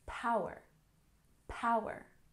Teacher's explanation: here we have power with emphasis on the first syllable